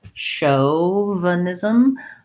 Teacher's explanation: the CH actually says the SH sound, and the AU sounds like the diphthong O. So just like in the word show, it's the same first syllable and first syllable stress, chauvin.